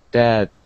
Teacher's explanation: So we say the word death, and our tongue goes between our teeth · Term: TH sound